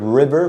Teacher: when you're using r as in English the tongue is in the back of the mouth